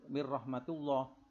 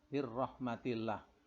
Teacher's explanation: tarkik itu adalah dibaca tipis karena sebelum lafadz Allah itu didahului dengan huruf yang berharokat kasroh